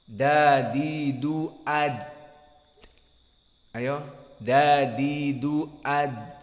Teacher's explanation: asalnya dia adalah jahar dan syiddah, inhibas an-nafas was-saut. Maka ditahan dari nafas dan saut.